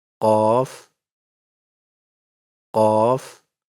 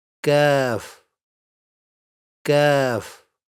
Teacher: The sound of qaf comes from deeper inside, while kaf is produced a little more towards the front.